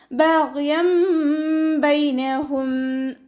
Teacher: ബഗ്യം ബൈനഹും ഗൈന് ഇസ്തിഅലാൻ്റെ ലെറ്ററാണ്. നാവിൻ്റെ ബാക്ക് നന്നായിട്ട് മുകളിലേക്ക് പൊക്കി കൊടുത്തിട്ട് തഫ്ഹീം ചെയ്യുക.